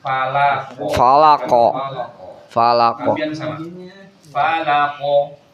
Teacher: Mantulnya dibunyikan huruf qalqalah. Mantulnya itu suaranya jangan pelan ya. Jadi sama dengan ketika huruf-huruf sebelumnya.